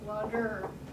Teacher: So that's really a syllabic R. There really isn't a separate vowel sound there. The R is what's called syllabic.